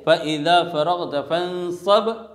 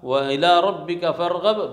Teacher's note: با ساکن سے پہلے اگر فتحہ ہو تو با پر آواز کس کی ہوگی؟ فتحہ کے مشابہ ہوگی۔ جیسے فَإِذَا فَرَغْتَ فَانصَبْ، با سے پہلے فتحہ، وَإِلَىٰ رَبِّكَ فَارْغَب، با سے پہلے غین کے اوپر فتحہ ہے۔ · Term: قلقلہ